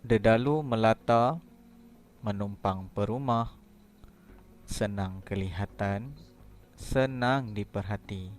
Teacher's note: setiap baris mesti ada jeda iaitu berhenti sekejap di antara perkataan yang kedua dan perkataan yang ketiga